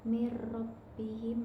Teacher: ada idgham bila gunah karena ada nun sukun bertemu dengan ro tasydid, yaitu pada bagian mir rabbihim dimasukkan tanpa dengung